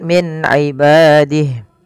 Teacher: Min ibadih ada nun sukun bertemu dengan ain, yaitu dibaca dengan jelas suara nunnya karena dia ada bacaan izhar halqi. Izhar artinya jelas, halqi berarti adanya tenggorokan.